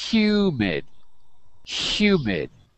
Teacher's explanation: notice the sound of the H in the word humid. It's almost like the word sh, like shoe, but softer.